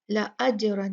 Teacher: آیت نمبر 3، وَإِنَّ لَكَ، نون مشددہ اچھے سے غنہ کیجئے، لَأَجْرًا، یہاں بھی جیم جو ہے یہ ساکن ہے تو ہم یہاں پر بھی کیا کریں گے، یہاں پر بھی جیم کا قلقلہ کریں گے، اس کو ہلا کر پڑھیں گے۔